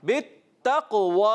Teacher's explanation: काफ को मोटा भी करना है और क़लक़ला भी अदा करना है।